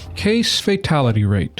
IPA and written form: ˈkeɪs feɪˈtælɪty ˈreɪt (case-fatality rate)